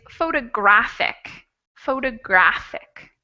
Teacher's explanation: the third syllable will be the stressed out of those four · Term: stressed syllable